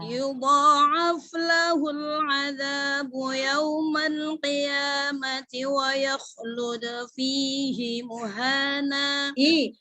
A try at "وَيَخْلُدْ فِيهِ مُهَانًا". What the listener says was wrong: Hi-nya panjang, Say. Fihi muhana.